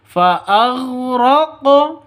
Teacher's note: qolqalah sugro harus dipantulkan ke qofnya